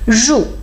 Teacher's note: 'r' is not easy to pronounce and with the falling tone may even make it harder